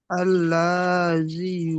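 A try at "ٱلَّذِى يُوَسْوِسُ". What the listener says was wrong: লা টান হবে না, আল্লাজি, লামের উপর যাবার আছে, টান হবে না, আল্লাজি,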